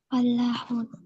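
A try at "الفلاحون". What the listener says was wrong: Apa kamu baca af atau apa tadi? Al. Al fallahuna. Lamnya hidup ya. Al. Maksudnya lamnya ditampakkan pengucapannya al. Kemudian lam yang ini ditasydidkan. Karena kalau nggak ditasydid, al falahuna itu artinya beda nanti. Fallahun dengan ditasydid seperti ini artinya para petani. Para petani pakai tasydid lamnya. Lamnya hilang kayak gini, al-falahun artinya adalah orang-orang yang beruntung. Berbeda artinya.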